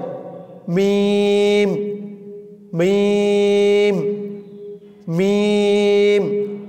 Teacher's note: দুই ঠোঁটের শুকনা জায়গা হইতে উচ্চারিত হয় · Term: মিমের মাখরাজ